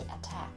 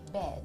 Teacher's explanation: But when you say bed, D isn't aspirated as much as T in attack. The aspiration for T is greater than the aspiration for D.